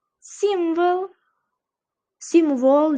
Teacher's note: O harfini deyarli o'qimay ketyapti. Simvol demayapti yoki sim demayapti.